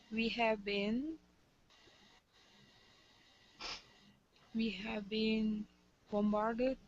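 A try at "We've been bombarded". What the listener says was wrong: don't be shy to pronounce contractions. Weave. It's okay.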